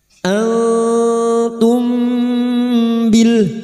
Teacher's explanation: bunyi nun sukun atau tanwin dibaca samar dan mendengung selama 3 harokat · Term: ikhfa hakiki